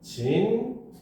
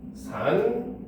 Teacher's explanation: 리을을 니은으로 발음을 합니다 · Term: 비음화